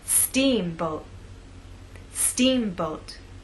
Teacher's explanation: making the first part of the word louder longer and at a higher pitch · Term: stressed part, word stress